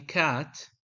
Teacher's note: k in cat involves the back of the tongue touching the velum